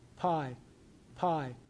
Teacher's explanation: You know, my here's the stop and then this little burst is is my lips opening and then there's a little burst of white noise. Uh and then we start in on the vowel.